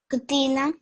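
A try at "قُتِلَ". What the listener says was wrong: When you say this, there is no tashdid or any other sign here, so it should be qutila.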